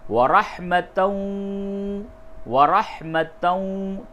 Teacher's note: یعنی تنوین کو واو سے ملا کر کے پڑھیں گے تو یوں ہوگا ورحمتً، ورحمتً، تا کو واو سے ملا دیں گے، ادغام مع الغنہ ہوگا۔